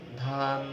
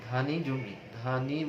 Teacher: যেমন তুমি ধান, ধান বললে একটু লম্বা হচ্ছে, খুবই সামান্য যদিও, কিন্তু ধানি, ধানি জমি, ধানি বললে কিন্তু ধায়ের পরে আবার নি চলে আসছে, এটা হচ্ছে হ্রস্ব উচ্চারণ